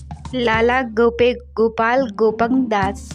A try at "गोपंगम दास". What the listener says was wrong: गोपंग नहीं गोपंगम दास।